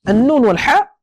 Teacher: النون في طرف اللسان مع الحنك الاعلى والحاء في اخر او في وسط الحلق فهناك تباعد في المخرج فلا نحتاج الى اخفاء